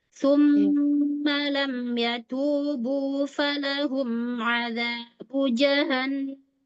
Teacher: Tumma bukan summa. Jangan di dalam tapi dorong keluar ya. Tumma suaranya di bibir.